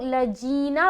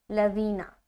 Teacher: ज़ाल की अदायगी मखरज ये कहता है ज़ाल को नरमी के साथ अदा करें। ज़बान की नोक सनाया उलिया का किनारा